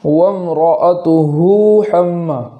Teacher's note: اسی کلمے کے آخر میں ہا پر الٹا پیش ہے، تو اگر ہم اس کلمے کو آگے وصل کے ساتھ یعنی ملا کر کے پڑھیں گے تو یہاں الٹا پیش ہے تو واو مدہ کی طرح تاخیر کر کے پڑھیں گے، اس طریقے سے وامرأتہ حم، اور اگر وقف کرتے ہیں تو اس ہا کو جزم کر دیں گے، جیسے وامرأتہ، وامرأتہ جزم کے ساتھ پڑھیں گے۔